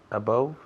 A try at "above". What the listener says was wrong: Esa O suena como si fuera otra A. Above. Above. No decimos above, no. Decimos above.